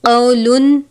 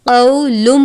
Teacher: معروف، تنوین کے بعد میم مشدد ہے، تنوین کو میم مشدد سے ملا کر غنہ کر کے پڑھیں گے۔ قولن نہیں پڑھنا بلکہ قولم پڑھیں گے میم کی آواز کے ساتھ۔